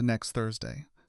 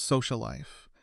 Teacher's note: Rather than pronouncing that sound twice in quick succession, native speakers simply drop the first instance and hold the second slightly longer. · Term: catenation